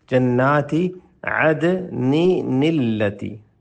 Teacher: التی ہے تو اس کو آپ نے پڑھنا ہے عدنی نلتی، دو دفعہ نون کی آواز پڑھیں گے، اس کو نون قطنی کہتے ہیں